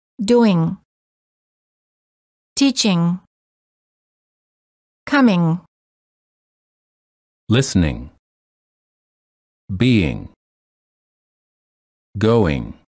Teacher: the tip of the tongue is down not touching anywhere the back of the tongue is up touching the soft palate which is located in the back of your mouth word contrasts